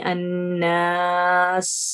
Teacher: اس میں ہمس ہے اور اس میں صفیر بھی ہے